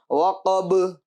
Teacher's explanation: با کے ساکن ہونے کی وجہ سے حروف قلقلہ ہونے کی وجہ سے آواز لوٹے گی